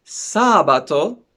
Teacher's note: for saturday we have the stress on the first syllable